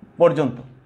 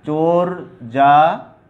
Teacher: বানানে জফলা বর্জন করেছে বটে, কিন্তু উচ্চারণে কিন্তু জফলার কারণে এখানে জফলা উচ্চারণে রয়ে গেছে এখনো, এই জন্যে উকারান্ত বা ও এর মতো উচ্চারিত হয়েছে।